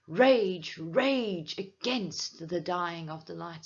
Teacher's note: I have a long A that is being emphasized, and it makes the lines sound forceful. And that adds to my tone that is almost desperate, almost pleading, don't.